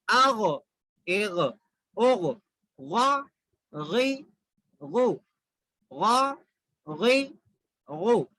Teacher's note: غین خا ایک جگہ سے نکالتے ہیں، حلق کے اوپر والے حصے سے. ہم حلق کے 3 حصے اگر کریں گے، ایک اوپر والا، ایک بیچ والا، ایک نیچے والا. · غین کو موٹا پڑھنا، موٹے پڑھے جانے والے حروف میں سے ہے غین